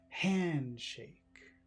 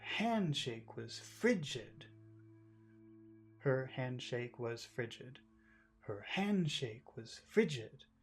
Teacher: when you say handshake all of the emphasis should be on the word hand